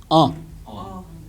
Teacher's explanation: With the nasal hook, say it through your nose.